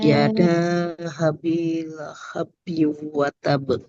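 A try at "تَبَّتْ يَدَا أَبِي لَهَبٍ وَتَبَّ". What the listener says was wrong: Di ba-nya agak ditekan di tasydid ya, karena ada ba yang bertasydid kemudian dia berhenti waqaf.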